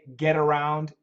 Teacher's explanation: get around is also a flat T